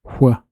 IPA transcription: ʍ